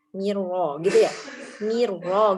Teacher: Ro-nya itu teridgham sempurna, maka ro-nya itu dibaca tebal. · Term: idgham kamil